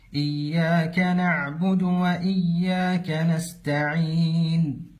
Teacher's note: ومن الأخطاء في تلاوة كلمة إياك عدم تشديد الياء إياك أو حبس الصوت فيها إياك، والصحيح أن تكون مشددة مع جريان الصوت